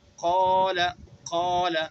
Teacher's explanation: جو آواز قاف کو ادا کرنے میں نکالی ہے وہی الف کو ادا کرنے میں نکالیں گے، قال قال. ٹھیک ہے، تیسرا حرف جو فرعی ہے وہ ہے الف مفخمہ، یعنی وہ الف جو پر پڑھا جاتا ہے، جیسے قال.